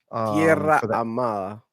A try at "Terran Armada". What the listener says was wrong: It doesn't say Tierra. It says Terran. Terran. It's not Tierra. That's Terran.